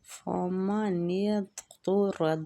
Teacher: ضاد مستعلیہ پور پڑھیں گے اس کو، طا بھی مستعلیہ اور را بھی فتح کی وجہ سے پور پڑھا جائے گا۔